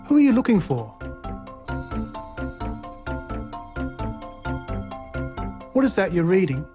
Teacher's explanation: Questions with who, what, when, why, and how also use this low or falling tone.